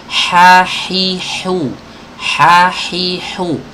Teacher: huruf ha yang di kasroh ini harus benar-benar kena dari makhrajnya di tenggorokan bagian tengah. Hi harus bersih.